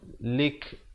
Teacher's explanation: bila kita waqaf pada huruf kaf, ianya diberikan tanda mati mendatang ya, dan juga diberikan bunyi anginnya.